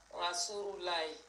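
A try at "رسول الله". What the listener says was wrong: Rasoulou, c'est pas rou. Non, Rasoulou. Rasoulullahi.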